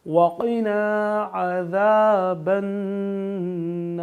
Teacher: نون پہ تشدید ہے تو گنہ کریں گے